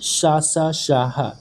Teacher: में हवा हल्की सी सीटी बजा हुई बाहर निकलती है और श्वास की प्रबलता के कारण एक प्रकार की गर्मी ऊष्मा उत्पन्न होती है उन्हें ऊष्म व्यंजन कहते हैं श सा शहा चार ऊष्म व्यंजन